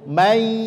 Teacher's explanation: Contohnya melebur huruf nun ke huruf ya, bunyinya menjadi may ya'mal, disertai gunnah, may. Ini bukti dia masuk ke gunnah atau dengung itu masuk ke rongga hidung. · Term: idgham bi gunnah